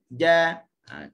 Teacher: Tengah lidah mesti dia tempel di langit atas. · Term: Huruf jim